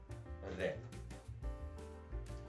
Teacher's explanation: ठीक है, जिसके उच्चारण में जिह्वा जो है वो लुंठ जाती है, उठ जाती है। उच्चारण के समय जिह्वा जो है वो 2-3 बार ऊपर नीचे होती है, हिलती है, कंपन होता है, इसलिए प्रकंपित।